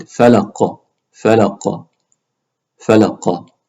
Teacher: The qaf needs to echo a little bit. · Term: qalqala